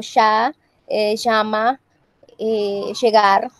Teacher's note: La Y también tiende a fricatizarse y suena como, por ejemplo, un poco parecida a la Y argentina, pero no tan marcada, como por ejemplo, ya, llama, llegar.